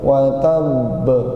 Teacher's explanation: Ini qalqalah yang bertasydid. Kadang orang menyebutnya qalqalah akbar. Qalqalah yang lebih besar katanya.